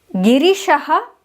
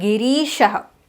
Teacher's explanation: In the first name the ra has a hraswa ‘e’ that is short ‘e’ attached to it. In the second name the ra has a deergha ‘e’ that is long e attached to it.